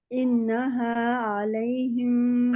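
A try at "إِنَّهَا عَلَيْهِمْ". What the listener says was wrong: आइन आइन को निकाले, आइन आइन को निकाले, हमजा नहीं। सादा मीम के लिए बिल्कुल होंठ गोल होने चाहिए।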